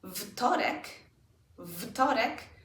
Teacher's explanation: because T is an unvoiced consonant, it influences the W and turns it into an F sound.